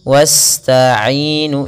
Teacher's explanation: Pada lafaz bacaan wasta'inu, sempurnakan aliran dalam bacaan sinnya, karena di sini sin cara membacanya adalah kita alirkan nafasnya wasta'inu, jangan jangan ditahan, karena dia huruf sin, huruf yang dia harus dikeluarkan nafasnya, atau kita kenal dengan sifatnya adalah sifat hamas dan sifat sofirnya berdesis.